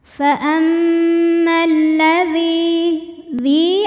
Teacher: Sebab ada ya sukun yang didahului baris kasrah. Cara membacanya dipanjangkan zalnya 2 harokat. · karena alif lam menghadapi huruf Syamsiah ya itu lam maka Alif lamnya tidak dibaca faammalladzi dzi ada hukum Mat thaobi'i zahiri sebab ada ya sukun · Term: mad tabi'i zahiri, alif lam syamsiah